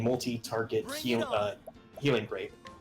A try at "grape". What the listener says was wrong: Also, when you said grape, it sounded like rape.